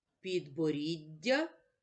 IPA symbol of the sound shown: д':